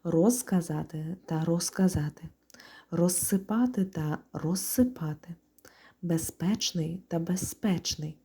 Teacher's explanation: у префіксах роз без кінцевий з оглушується при швидкому темпі мовлення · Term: оглушення